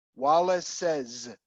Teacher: It's a Wallace's. The first is an S, Wallace. That last is a Z.